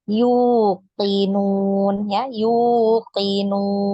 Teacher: Jangan ditekan, jangan yuqinun. Nanti jadi seperti ada huruf hamzah ya di depan huruf ya dhammah. Nah, ini berarti menambah huruf ya, mengubah.